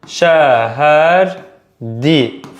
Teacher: Bu sözün hecaları şəhərdir formasındadır və son hecadakı r samiti tələffüz zamanı düşür. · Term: samiti düşür